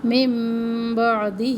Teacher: نون ساکن کے بعد جب با آ جائے تو یہاں پہ نون کی آواز میم میں بدل جائے گی، اقلاب کا قاعدہ ہے.